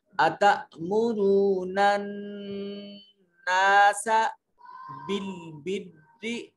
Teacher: یہاں نون مشدد ہے, غنہ واجب ہوگا, آواز کو ناک کے نتنوں میں لے جا کر گنگنائیں گے · نون کو اپنے مخرج میں چھپا کے پڑھیں گے